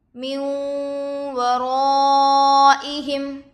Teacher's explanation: نون پر جزم ہے، نون ساکن ہوگا. نون ساکن کے بعد حروف یرملون میں سے واو دوسرے کلمے میں آ کر ہے، غنے کے ساتھ ملا کر پڑھیں گے. اس کو ادغام مع الغنہ اور ادغام ناقص بھی کہتے ہیں. · واو پر زبر کی حرکت ہے، جلد پڑھے. الف سے پہلے زبر ہے، الف مدہ ہوگا. حروف مدہ کے بعد حمزہ اسی کلمے میں ہے، مد متصل ہوگا. حمزہ پر زیر کی حرکت ہے، جلد پڑھے.